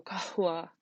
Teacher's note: very breathy and you basically just sigh through the word